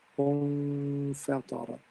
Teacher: This is إخفاء. You hide the sound of noon sakin.